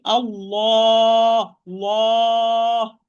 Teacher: the lam of the word Allah is heavy because it's preceded by fatha. So I say Allah, Allah, mufakham, and lam is mufakham between brackets.